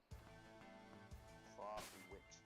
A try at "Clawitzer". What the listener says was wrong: It's Clawitzer. Like because there's no C sound to like give it that the CH sound.